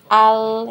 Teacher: ketika sukun dia temponya lebih panjang sedikit, tapi tidak panjang banget ya, tidak sampai satu ketukan ya, dipanjangkan sedikit. Al ya itu tadi biar tidak ada pantulan ya, tidak ada tawaludnya ya, seperti itu.